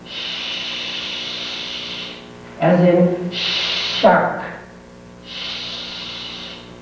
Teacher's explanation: The tongue again touches the upper gum ridge, but it's a thicker tongue that is touching and the air still vibrates through. It is a sound produced with no tone.